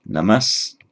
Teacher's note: that final s reverts to being a full s if it's followed by a dental